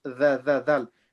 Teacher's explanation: Dhal, tip of the tongue. Okay, it touches the bottom of our front two teeth. Dhal. Don't make it za.